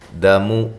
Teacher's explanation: دال بھی باریک ہے، میم بھی باریک ہے، دونوں کو لمبا نہیں کرنا